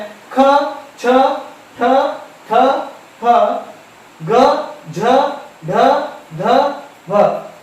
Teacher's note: ಹೆಚ್ಚು ಉಸಿರನ್ನ ಬಳಸಿಕೊಂಡು ಉಚ್ಚಾರವಾಗುವಂತಹ ಅಕ್ಷರಗಳಿಗೆ ನಾವು ಮಹಾಪ್ರಾಣಾಕ್ಷರಗಳು ಅಂತ ಹೇಳಿ ಕರಿತೇವೆ. ಅವು ಯಾವ್ಯಾವುದು ಅಂತಂದ್ರೆ ಖ, ಛ, ಠ, ಥ, ಹ, ಗ, ಝ, ಢ, ಧ, ಭ.